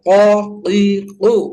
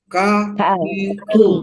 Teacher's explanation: kalau qaf itu agak ke dalam ya, sedangkan kaf agak keluar ya, lebih ke depan keluar, sehingga dia suaranya tidak terlalu tidak isti'la ya, tidak harus terangkat dia. · bunyi huruf kaf keluar dari pangkal lidah ya, di depan makhraj huruf qaf · kaf lebih ke depan, lebih keluar, artinya di tengah-tengah lidah